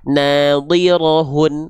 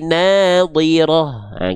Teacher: Enggak dibaca nadirat, enggak jadi huruf ta kalau berhenti, tapi jadinya huruf ha.